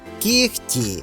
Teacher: можуть бути перевірені наприклад у потоці швидкого мовлення в слові кігті глухий приголосний кір впливає на вимову попереднього дзвінкого приголосного г ніби оглушуючи його аж до х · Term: уподібненням